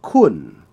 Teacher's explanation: The word for you is kun, which is a mid-tone.